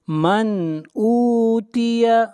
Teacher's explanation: میم کو ظاہر کر کے پڑھیں گے، اظہار حقیقی ہوگا، اس لیے کہ نون ساکن کے بعد حروف حلقی میں سے حمزہ ہے